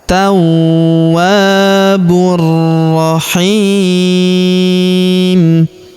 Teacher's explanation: Huruf bu langsung sambung ke huruf ro yang berharakat tasydid. Langsung masuk ke sini. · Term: alif lam syamsiyah